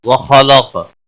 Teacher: خا اور قاف دونوں حروف مستعلیہ میں سے پور پڑے جائیں گے. قاف ساکن بھی ہے اس پر کلکلہ بھی ہوگا.